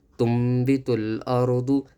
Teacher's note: نون کے اوپر جزم ہے تو یہاں پر میم آ رہا ہے، چھوٹی میم آ رہی ہے تو قلب کرنا چاہیے، اقلاب کا قاعدہ ہوگا.